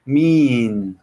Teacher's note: Mean se pronuncia con la E larga del inglés y ese es un sonido como nuestra I más extendida. Mean. Como si fueran dos o tres I's seguidas.